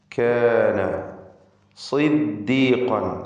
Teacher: സ്വാദിന് കസ്റുള്ളത് കൊണ്ട് കുറഞ്ഞ തഫ്ഖീം കൊടുക്കുക.